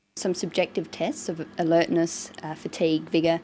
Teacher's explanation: So she uses a variety of intonation. She uses rising and falling tones, and a tone that's neither rising nor falling, just a flat tone for the items in the list. This tells the listener that she hasn't finished her list of tests.